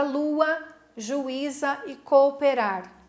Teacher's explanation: na separação silábica essas vogais se separaram elas vão para sílabas diferentes isso é um hiato